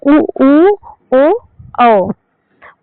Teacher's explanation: वृत्त मुखी का मतलब है कि जब इनका उच्चारण किया जाएगा तो ओष्ठ जो है एकदम उसकी आकृति गोल हो जाएगी